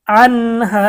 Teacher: নুন সাকিনের পরে হরফ হা এসেছে গুন্না ছাড়া স্পষ্ট পড়তে হবে আনহা জবরের পরে আলিফ মধ্যে তবা এক আলিফ টান আনহা ওর